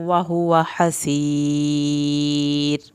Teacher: آخر میں را جو ہے وہ پتلی پڑھنی ہے، را کو پر نہیں کرنا